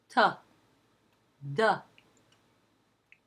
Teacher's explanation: throat what happens with a t or a d is that you have the tip of the tongue that's up touching lightly against the back of the upper teeth